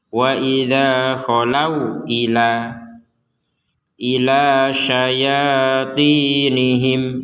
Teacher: Qolu artinya ini tidak berpengaruh kepada kata. Artinya tidak menjadi memanjangkan kata tersebut. Jadi jangan dibaca kholau, tetap dibaca pendek.